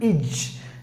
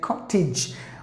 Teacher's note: Here, any word ends with the letter E, it is silent. And then AGE ending, you have to pronounce it not with a long sound, with a short sound.